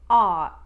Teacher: You're going to get rid of the R and glottalize the T.